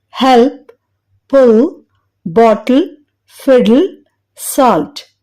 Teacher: అందుకే ముందు వచ్చే వల్ సౌండ్ ని కలుపుకొని పలకడం వలన సులువు అవుతుంది డార్క్ ఎల్ ని పలికేటప్పుడు టిప్ ఆఫ్ టంగ్ అంటే నాలుక చివరి భాగం బోనీ రిడ్జ్ అంటే పై పండ్ల వెనుక గట్టి భాగంపై పెట్టడానికి లిఫ్ట్ చేయబడుతుంది కానీ టచ్ అవ్వదు ఈ క్రమంలో అంటే నాలుక చివరి భాగం నోటిలో గాలిలో వేలాడుతున్నట్లు ఉంటుంది పిక్చర్